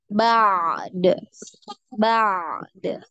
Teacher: jadi dialirkan dulu ainnya ba, baru di qalqalah huruf dal